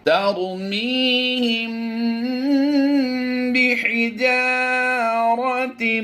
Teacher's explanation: یہاں پر میم ساکن کے بعد حرف با آ گیا، یہاں پر اخفاء شفوی کا قاعدہ ہوگا، ہم یہاں پر غنہ کر کے پڑھیں گے۔ ترمیہم بحجارۃ، تا میم دو زیر تیم کی آواز دیں گے۔